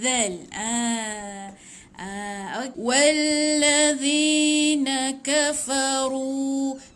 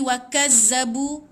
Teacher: Bunyi dia macam tumpul sikit sebab kita kena zal hujung lidah di antara dua gigi.